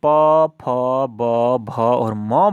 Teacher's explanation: तो जब भी हम प, फ, ब, भ और म बोलते हैं तो क्या हो रहा है कि हमारे दोनों होंठ आपस में सट जा रहे हैं, तो यानी कि ये ओष्ठ है।